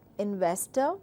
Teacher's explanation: it is a 3 syllable word, and very clear we have to stress on VES, which is VES, investor.